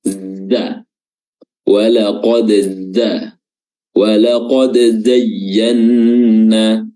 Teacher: Za itu ujung lidah bertemu dengan ujung gigi seri bawah bagian belakang, ya, dan juga otomatis bertemu dengan ujung gigi seri atas karena dipertemukan, ditutup. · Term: makhraj huruf zai